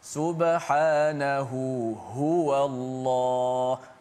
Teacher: Jangan kita baca subhanahu wallah bunyi tak bunyi dua-dua ha tu tekan. Kaedah orang Arab cara baca di sini ialah dia akan slow intonasi pertama ha dan dia akan kuatkan intonasi ha yang kedua